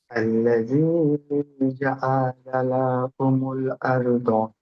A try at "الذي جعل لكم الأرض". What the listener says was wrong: লা টান হয়ে যাচ্ছে। লা হারাকাত আছে, টান হবে না। জাআলা লাকুমুল আরদ।